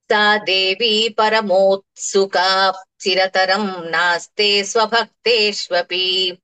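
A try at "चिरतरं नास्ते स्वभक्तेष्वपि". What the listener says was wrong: చిరతరం తర్వాత మళ్ళీ పెదాలు ముయ్యకూడదు, కలిపి చెప్పేస్తున్నాం కదండి. సా దేవీ పరమోత్సుకా చిరతరం నాస్తే స్వభక్తేష్వపి.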